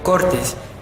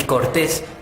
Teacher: acentuando la primera sílaba y la última